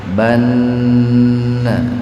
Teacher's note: Nun bertasdid itu gunah. Di satu sisi ini nunnya disebut gunna artinya mendengung.